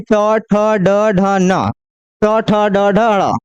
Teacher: मूर्धा मतलब जीभ मुड़ करके तालु को टच करेगा ऊपर